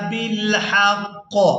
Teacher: وقف کی صورت میں قاف کے نیچے جو زیر ہے اس کو ہم نے ادا نہیں کرنا، اور را کے اوپر زبر ہے تو اس کو پورا ادا کیا جائے گا۔